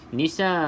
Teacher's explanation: alif lam syamsiah terus masuk ke dalam huruf nun tidak perlu sebut huruf lam